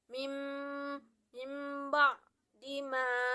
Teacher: Mim ba'di, yaitu ketika nun mati bertemu dengan ba, bunyinya itu seperti dengan mim. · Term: iklab